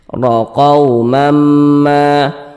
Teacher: huruf ro-nya kita baca tebal. Nah, kita baca tafkhim. Nah, sehingga pangkal lisan kita naik terangkat ke atas ketika kita mengucapkannya.